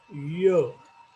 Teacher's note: Hard पॅलेट जिथं आहे, जिथं हार्ड भाग आहे, त्या ठिकाणी हा शब्द म्हटला जातो, हा साऊंड म्हटला जातो. That is why it is called पॅलेटल.